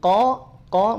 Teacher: tebal ya diapit oleh dua kondisi yang tafkhim yang yang satu huruf qf ya harakat fathah dia tebal qo qo bunyi vokal o